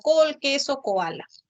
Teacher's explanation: la oclusiva velar sorda que puede ser representada por la letra c